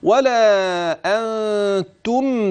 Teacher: نون ساكنه اتى بعدها تاء فالحكم اخفاء حقيقي